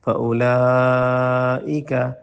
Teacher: لائک یہاں مد واجب ہے، اس کو لمبا کریں